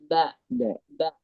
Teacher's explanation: നനവുള്ള ഭാഗം ടച്ച് ചെയ്യുമ്പോഴാണ് ബ എന്ന അക്ഷരം വരിക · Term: ബയുടെ മഖ്റജ്